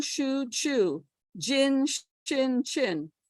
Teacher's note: they're all pronounced in the palatal region